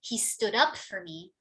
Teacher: it's the up that receives more stress